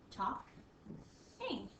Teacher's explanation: it's an L weird letter to be in the word talking you don't hear the L at all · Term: silent letter